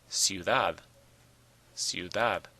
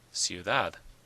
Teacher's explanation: It ends in a D, not an N or an S. So the stress is on the last syllable